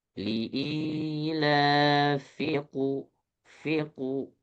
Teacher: Hati-hati, fi-nya tidak panjang.